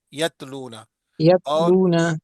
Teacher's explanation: تا کی آواز باریک اور بغیر جھٹکے والی ہوتی ہے